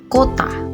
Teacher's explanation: vokal o Tengah atas belakang bundar